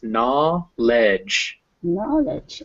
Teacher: there's a w written but there's no actual w sound